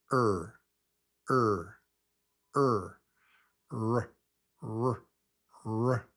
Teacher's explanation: But the tongue winds up being pulled back. So it's the lips are a little bit round and there's no tap